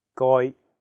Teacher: so you have to really stress the m sound and then the second character is in a high flat tone first tone